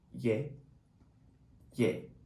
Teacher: ㅒ(yae) and ㅖ (ye) Sounds like similar almost identical to each other